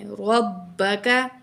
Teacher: काफ बारीक है, इसको क्याफ नहीं पढ़ना, काफ ही पढ़ना है